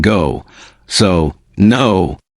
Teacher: your lips become round and forward like in go